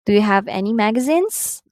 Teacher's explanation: you can notice in the statements while i utter them um the words at the end of the sentence are going up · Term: rising intonation